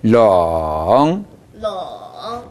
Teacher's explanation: 다시 한번 동티엔 페이창 렁 렁 하지 마시고 삼성에서는 이렇게 내려간 부분 있죠. 내려가는 부분에서 주요 모음이 가장 길게 작용해야 됩니다. 렁 하지 마시고 렁 네, 이 성대에 닿지 않았습니다.